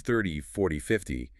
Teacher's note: But with the tens, 30, 40, 50, the heavy stress is on the first syllable.